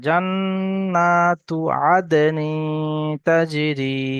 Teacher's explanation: জান গুন্না হবে, তা গুন্না হবে না।